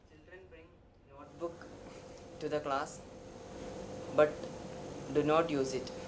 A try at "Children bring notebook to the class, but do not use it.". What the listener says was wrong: Okay, the problem with many Malayali speakers is the interchange. They pronounce NOT as NOTE and NOTE as NOT. So what should be notebook becomes notebook, and what should be not becomes note. Okay, but once you pay attention, move your tongue accordingly, open your mouth accordingly, and you take care of it.